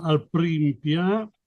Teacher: pia con l'accento sulla A finale